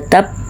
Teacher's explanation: Di atas ba ada tasydidnya, jadi harus ada jedanya baru kemudian diqalqalahkan. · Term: qalqalah akbar